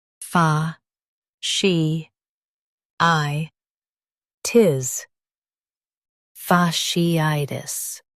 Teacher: Emphasize I and soften tis.